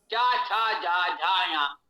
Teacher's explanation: ये च वर्ग तालव्य है